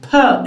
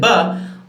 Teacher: The first one is voiceless no vibration, the second one is voiced. The same thing here for this pair /t/ and /d/, /ʧ/ and /ʤ/, /k/ and /g/.